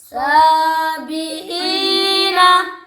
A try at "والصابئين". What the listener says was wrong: سواد موٹا پڑھو. والصابئین. سواد تو ہر بار موٹا نہیں پڑتا.